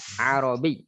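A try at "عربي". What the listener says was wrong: Bukan justru dipanjangkan ya, saudara-saudari, tapi ditekan. Arabi.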